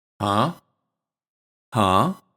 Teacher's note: We don't say huh, we say huh, huh. When we use it to express that we noticed something, it's pronounced with a rising intonation, and it's slightly long to show curiosity.